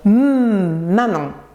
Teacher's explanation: Les 3 consonnes nasales, ces consonnes chantent dans le nez. L'air passe en effet par la cavité nasale.